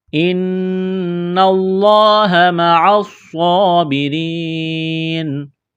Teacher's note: نون مشدد ہے، غنہ کریں گے، آواز ناک میں چھپائیں گے